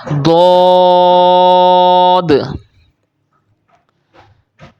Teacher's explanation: اس کو آپ نے موٹی آواز کے ساتھ پڑھنا ہے کیونکہ یہ بھی انہی 7 موٹے پڑھے جانے والے حروف میں سے ہے، حروف مستعلیہ میں سے ہے۔